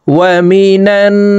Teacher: عظيم ولهم عذاب عظيم ওয়াও জবর ওয়া মিম জের মি নুন নুন জবর নান ওয়াজিব গুন্নাহ হরকতের বামে নুনে মিমে তাসদিদ হইলে সর্ব অবস্থায় নাকের বাসি থেকে গুন্নাহ করিয়া পড়িতে হয়। তো এই নুন তাসদিদওয়ালা নুনের সাথে নাকের বাসি থেকে 3 সেকেন্ড পরিমাণ গুন্নাহ করে ধরে রাখবো।